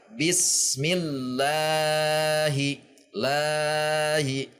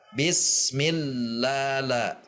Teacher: la itu mad tabi'i 2 harokat, tidak boleh lebih.